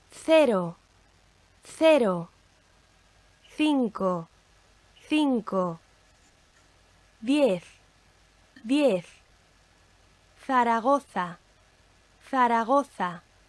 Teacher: Okay, and if we look at the letters theta, or Z, and the, C, when it occurs before an I or an E. And in most of Spain, it's pronounced like the TH, the th, in thick or bath. Elsewhere in the Spanish-speaking world, it's pronounced like the S in sit or C. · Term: lisping sound